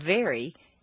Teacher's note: 2. when you say F it's as if you're Whispering so for V say F and then simply add some voice to it